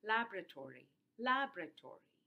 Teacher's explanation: But very often in rapid speech, you actually delete the vowel between the b and the r, and then you get only four syllables in this particular word · the stress is on the first syllable, and therefore you are shortening your fifth syllable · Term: deletion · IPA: ['læb.ɹə.ˌtɔ.ɹi]